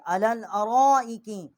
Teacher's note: ہم نے یہاں را جو ہے یہاں پر بڑی مد ہے، اس کو 4 الف جتنا کھینچا ہے